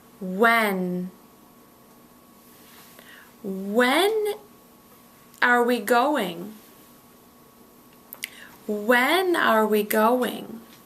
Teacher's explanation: you notice the when and are that are linking together